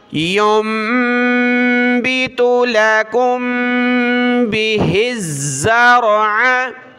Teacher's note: میم ساکن کے بعد با ہے تو یہاں ہم نے ناک میں آواز پیدا کرنی ہے